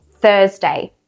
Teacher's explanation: we don't say the R most of the time in Australian English, besides some exceptions.